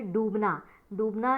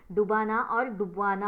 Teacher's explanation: इसमें ड की जो मात्रा है वो दीर्घ है, लेकिन वो प्रथम प्रेरणार्थक और द्वितीय प्रेरणार्थक रूप में डुबाना और डुबवाना हो जाती है, जहाँ पर ये मात्रा ह्रस्व हो जाती है।